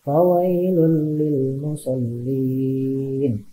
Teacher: Di sana ada tanwin domah bertemu dengan huruf lam. Dibacanya tidak berdengung, berarti nama hukum tajwidnya idgham bila gunnah ya.